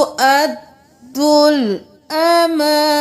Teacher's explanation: दाल पेश लाम दुल, अमा और ना एक एक अलिफ के बराबर इस दोनों को खींचेंगे